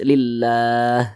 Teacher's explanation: Kalau dia memiliki tanda baca kasrah, maka kalimat Allahnya dibaca tipis, dibaca tarkik.